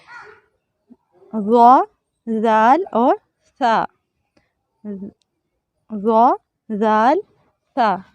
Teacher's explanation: ज़ुबान की नोक और सुनाया उलिया का अंदरूनी किनारा, इससे 3 हरूफ अदा होते हैं। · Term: हरूफ लिसाविया